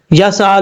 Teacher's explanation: اور سین میں سیٹی کی آواز آئے گی۔ اس کی وجہ یہ ہے کہ یہ حروف صفیریہ میں سے ہے